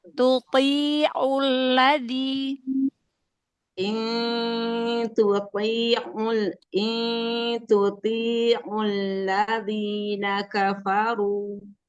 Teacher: Hati-hati masuk ke hidung yang huruf ain domahnya ya.